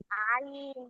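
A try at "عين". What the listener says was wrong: আইন এটা পাতলা বলে না আইন বলেন আইন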